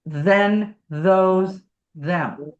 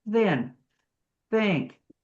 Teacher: If I went thin, you're not going to feel the vibration until you get to the vowel.